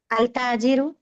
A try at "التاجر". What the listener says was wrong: الف لام نہیں بیٹا, لام نہیں پڑھنا ہے نا. پھر التاجر کیسا پڑھتے بیٹے آپ؟ ہاں یہی تو سمجھانا ہے آپ کو کہ یہاں پر لام کی آواز نہیں آنی ہے, تبھی تو شمسیہ ہے. التاجر پڑھیں تو مطلب آپ عربی زبان میں اس کی باریکی سے واقف نہیں ہے, کچے ہیں. التاجر التاجر.